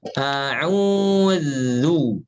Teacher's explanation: huruf zal itu dari ujung lidah ya, bertemu dengan ujung seri atas